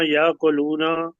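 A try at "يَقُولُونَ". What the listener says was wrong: नहीं, या कुलूना नहीं, देखे अगर यहाँ पे होता है ये के ऊपर खड़ी जबर तो फिर आप कहते या कुलूना, यहाँ है पे यकूलूना।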